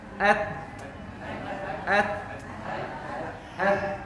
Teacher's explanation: أما التاء فتخرج من طرف اللسان مع أصول الأسنان الأمامية العلوية